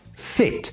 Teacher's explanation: the vowel sound in the word sit is a close front vowel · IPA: /sɪt/